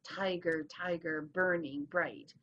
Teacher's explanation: the first syllable gets the emphasis, and the second one is unstressed